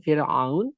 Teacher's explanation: Fa adalah bukan huruf isti'la. Fa bukan huruf isti'la. Maka dibacanya dengan Fir'aun, maka ra-nya dalam keadaan tipis. Jadi setelah huruf-huruf yang istifal, maka dan kemudian ra-nya dalam keadaan sakin, kemudian dia dahului oleh kasroh, maka dia dibaca tipis.